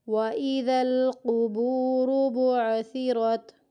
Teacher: کاف باریک نہیں پڑھنا، را کو موٹا کرنا یہاں پہ